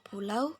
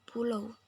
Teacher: Kata aslinya pulau, monoftongisasinya pulau. Dalam beberapa dialek atau variasi, diftong au dalam pulau bisa mengalami monoftongisasi menjadi o.